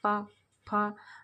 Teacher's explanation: ऐसा लगेगा जैसे ओठ हमारे आपस में मिल रहा है, पा, फा, तो ये हो गए ओष्ठ वर्ण।